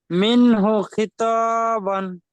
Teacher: নুন সাকিনের পরে হুরুফে হালকির 6টি অক্ষরের মধ্যে থেকে হা এসেছে, তাই নুন সাকিনকে বিনা গুণায় জাহির করে তাড়াতাড়ি পড়তে হবে।